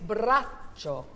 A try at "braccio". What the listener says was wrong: So it's not the ch sound, it's how you do the up vowel, braccio, and really don't have such explosive consonants in Italian.